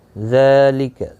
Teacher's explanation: ذال کے اوپر کھڑی زبر ہے، ایک الف کی مقدار کے برابر کھینچ کر پڑھیں گے